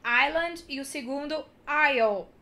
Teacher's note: Esqueçam que esse S existe, então island e o segundo isle